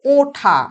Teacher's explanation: যেমন উঠা হয়ে যায় ওঠা, অর্থাৎ হ্রস্ব উ পরিণত হলো ও ধ্বনিতে